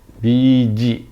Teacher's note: There is a glottal stop at the end of the word BG. BG, just like a glottal stop.